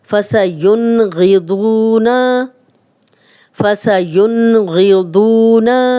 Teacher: فَسَيُنْغِضُونَ فَسَيُنْغِضُونَ ین جزم والا نون آگے غین آ گیا ہم غنہ نہیں کرے.